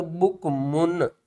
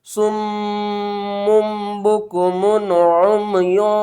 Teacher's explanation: اب ہم یہاں پر اخفا یا غنہ نہیں کریں گے, میم کی آواز کو ظاہر کر کے پڑھیں گے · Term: اظہار